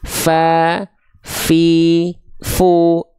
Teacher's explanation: huruf Fa juga dia kadar nafasnya hamsnya mengalir